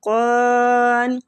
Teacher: قان قاف مستعلیہ ہے پور پڑیں گے، الف مد کی وجہ سے قاف کو کھینچا بھی جائے گا